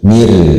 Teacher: Contohnya seperti yang ada di gambar itu, mir atau ri tipis ya, posisi lidah tidak mengangkat bagian belakangnya, tapi biasa standar cuma ujung lidah naik